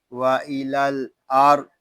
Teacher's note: یہاں را کو پر پڑھیں گے. را اس لیے پر پڑھا جا رہا ہے کہ را ساکن سے پہلے حرف پر زبر آ رہا ہے